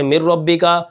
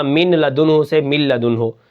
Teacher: اسی طرح ادغام میں نے آپ کو بتایا کہ دو زبر دو زیر یا دو پیش، اس کے بعد واو آ جائے، نون آ جائے، میم آ جائے، یا آ جائے، تو وہاں پر ادغام ہوتا ہے مع الغنہ، ٹھیک ہے۔ اور اگر لام اور را آ جائیں تو یہ نون ختم ہو جاتی ہے، من ربک سے مر ربک، اور اسی طرح من لدنہ سے مل لدنہ، وہاں پر نون ختم ہو جائے گی، لام اور را کی آواز آ جائے گی۔